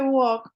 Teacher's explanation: no le suena la l suena como una u y no le suena la l Entonces yo digo y hago